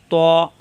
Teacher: জিহ্বার আগা উপরের দুই দাঁতের গোড়ায় লাগিয়ে উচ্চারণ করতে হয়